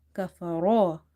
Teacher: Ra is heavy because of having fatha on top of it.